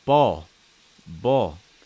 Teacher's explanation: Notice that my lips are much straighter. The back of my tongue is high and the front of my tongue is down.